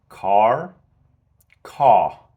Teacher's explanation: do you see how I'm pronouncing the r there it sounds more American